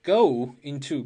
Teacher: 元元连读中间加上半元音▁w